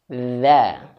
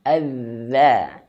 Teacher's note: Dzal ini makhrajnya adalah ujung lidah disentuhkan dengan ujung gigi seri atas. Dza. Lidahnya dikeluarkan, adza.